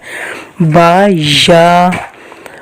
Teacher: با جب ادا کیا جاتا ہے تو اوپر والے ہونٹوں کے خشک حصہ اور نیچے والے ہونٹوں کا خشک حصہ آپس میں ملایا جاتا ہے۔ با یا، اور یہاں پہ دونوں دانت جو ہے بند ہو جاتے ہیں، اوپر والے دانت اور نیچے والے دانت بند کر کے جو ان میں سے ہلکی سی آواز نکلے گی اس پہ یا ادا ہوگا۔